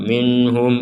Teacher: nun sukun bertemu ha maka kita membacanya dengan jelas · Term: dibaca dengan jelas